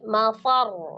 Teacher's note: Ada penekanan di huruf ra ketika disukunkan bertasdid